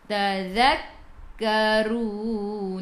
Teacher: Ra baris depan kena baca dengan tebal. Sebelum huruf akhir ada waw yang tak ada baris.